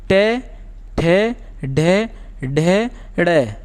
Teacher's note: जब हम इनका उच्चारण करते हैं तो हमारी जीभ मूर्धा से जाकर के टकराती है, यानी मूर्धा से जाके टकराती है, यानी हमारे ऊपरी कठोर भाग से जाकर के जीभ टकराती है, इसलिए हम इन्हें मूर्धन्य व्यंजन भी कहते हैं।